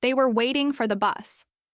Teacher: If you stress they and for, it sounds strange. If you stress waiting and bus, it sounds fluent.